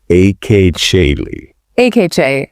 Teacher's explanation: Yeah, notice how that T sound sort of morphs into a soft sh, like in chicken, and the U sound practically disappears